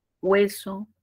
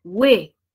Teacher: en hueso se unen porque la mayor fuerza de voz está en la vocal abierta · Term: diptongo